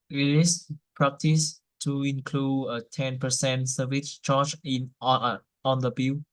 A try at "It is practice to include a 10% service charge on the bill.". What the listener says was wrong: Good. Good reading. Thank you.